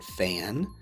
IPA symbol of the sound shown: f